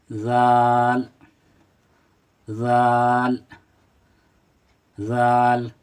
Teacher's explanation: और ज़ाल को थोड़ा खींचकर और नरमी के साथ पढ़ेंगे। ज़बान का सिरा जब सामने वाले दांतों के ऊपर से टकराता है, टच होता है, तो ये अदा होता है।